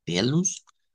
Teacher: esta va a sonar como pelus, cambiando esa O por U